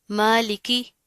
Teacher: میم کے اوپر کھڑا زبر ہے، 1 الف کے برابر پڑھا جائے گا